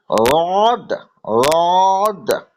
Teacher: বাঁ দিকে যদি আমরা জিভের গোড়াটাকে তার বরাবর, জিভের গোড়া কিনারাটাকে তার বরাবর উপরের মাড়ির দাঁতের গোড়ার সাথে লাগিয়ে উচ্চারণ করি রড, রড, তাহলে সেটা জদ উচ্চারণ করা যাবে।